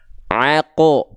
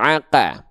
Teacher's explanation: qaf itu seringkali kita baca ketika fathah itu justru bunyi vokalnya adalah O. Aqo, bukan aqa. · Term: keadaan yang tebal